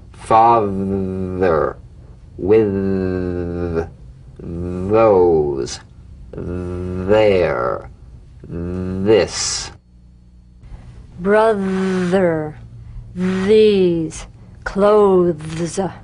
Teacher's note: the voiced tongue point to teeth fricative th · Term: voiced th